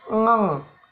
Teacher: Yang ke D dihasilkan pangkal lidah dan langit-langit lunak